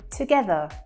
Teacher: we don't really pronounce that R again. It has more of an UH sound, as in umbrella. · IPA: /ə/